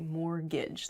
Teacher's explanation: mortgage has a t in it but we don't say the t it sounds like mortgage like there's no t at all a